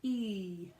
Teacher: my lips are quite retracted you don't want to get to the point where you're retracting